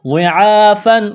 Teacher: ہے، یہاں پر اخفا کریں گے، آواز ناک میں چھپائیں گے، غاد کو موٹا کرنا ہے، عین کے اوپر کڑا زبر ہے، ایک الف کے برابر کھینچنا ہے